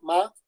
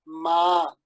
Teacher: Y es una diferencia tonal, ¿no? Ma es un tono bajo, ma, y ma es un tono ascendente, ¿no? O sea, es decir, va subiendo la cadencia.